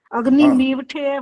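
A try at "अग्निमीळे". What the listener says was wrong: ठ नहीं है ये, यहाँ अग्नि मीढ़े बोलते हैं, मीढ़े। कोई ल बोल देता है, इसको ल नहीं है ये। अग्नि मीले बोलते हैं कुछ लोग, ल नहीं है ये लिखने में ऐसा होता है जिससे लग रहा है कि ल होता है, ये ल नहीं होता ये। अग्नि मीढ़े, अग्नि मीढ़े।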